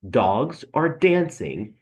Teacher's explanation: you have a stress beat an unstressed beat a stress beat an unstress beat